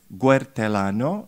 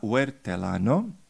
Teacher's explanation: utilisation systématique d'un son vélaire devant un diphtongue UE